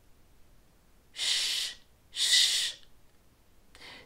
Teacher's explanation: bunching up the middle of your tongue from behind and try to say an S sound with the middle of your tongue behind that ridge